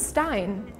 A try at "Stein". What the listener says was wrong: Stein? Almost. I mean, because you would pronounce it ST like Stein, like st. But in German, to this word, we say Stein. It's more like a sh sound. It's like the combination.